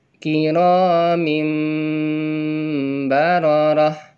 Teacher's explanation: merubah menjadi suara mim kemudian disertai dengung